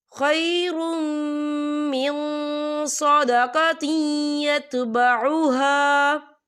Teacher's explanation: نون ساکن کی آواز کو ناک میں چھپائیں گے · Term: اقفا